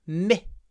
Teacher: we say the I is clipped before the th myth open your mouth myth it will be easier to bite